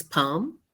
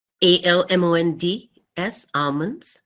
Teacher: if there is an L before M the L will be silent